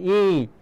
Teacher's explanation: আর যখন ই তো দেখুন মুখটা দেখো সামনে চলে আসছে, ই।